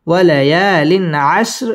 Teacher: ওয়ালা ইয়ালিন ইজহার, তানবিনের বামে আইন আসছে, এটা ইজহারের হরফ গুন্না ছাড়া স্পষ্ট করে পড়তে হবে। ওয়ালা ইয়ালিন আশর র বারিক হবে, এখানে র বারিক করে পড়তে হবে এবং ওয়াকফ করতে হবে।